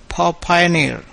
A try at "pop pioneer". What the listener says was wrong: Got to pronounce that with more air. Pop Pioneer. Pop Pioneer.